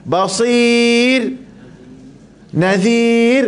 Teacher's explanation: Sebab apa nipis? Sebab sebelumnya ada baris bawah dan ada ya.